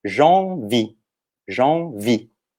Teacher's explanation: O E não é pronunciado no final e a sílaba forte é a última, que ela tem a força no I.